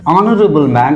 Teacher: I am not pronouncing this H it is silent